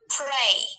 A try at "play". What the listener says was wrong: L은 L답게 소리 내야 되는데 왜 R처럼 소리를 내냐고. pray는 기도하다다 이놈아. 기도하다. play라고 play는 play답게 발음해야 될 거냐?